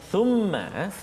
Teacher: Thumma di atas huruf mim ada sabdu. Thumma wajib al-gunnah, kena dengung kat situ dua harakat, tak boleh cepat ataupun tak boleh laju bacaan kita